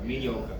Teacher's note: We don't pronounce the R.